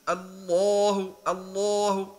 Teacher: اللام المغلظة تخرج كأنها من الداخل واللام المرققة تخرج إلى الخارج. like the heavy lamb, it's inside, and the weak one, it's out.